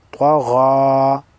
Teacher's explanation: طا زبر طا غین کڑا زبر غا طغا. طا اور غین دونوں حروف مستعلیہ میں سے ہے لہٰذا موٹے ادا ہوں گے